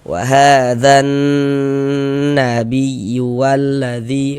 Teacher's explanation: Wahadan di bagian yaitu suaranya itu kita tahan, kita panjangkan sejenak, kita gunahkan, kita dengungkan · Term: ghunnah musyaddadah, Gunnah musyaddadah